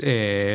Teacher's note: En lugar de eh rápido es eh largo que se extiende mientras su cerebro trabaja duro. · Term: pausa llena, prolongada